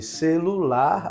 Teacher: a sílaba tônica vai ser o lar de celular